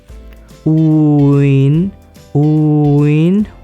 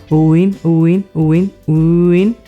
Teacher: take the sound u in boo and in bean, and then combine them and speak it very quickly. For example, uin, uin, more quickly, uin, uin, uin, uin. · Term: uin vowel sound